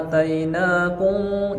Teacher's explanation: Khudu ma A-nya 2 harokat, mad badal.